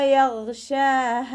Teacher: ഗൈന് ഇസ്തിഅലാൻ്റെ ലെറ്ററും കൂടിയാണ്, തഫ്ഹീം ചെയ്തിട്ട് ഉച്ചരിക്കുക കേട്ടോ. ഷീനിൻ്റെ കൂടെ അലിഫ് സോഹിറ വന്നു, 2 കൗണ്ട് നീട്ടിക്കൊടുക്കുക. അവസാനത്തിൽ ഹ കൂടെ അലിഫ് മദ് വന്നു, 2 കൗണ്ട് നീട്ടി നിർത്തുക.